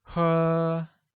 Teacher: Drink translates to 喝, carrying a high-level tone.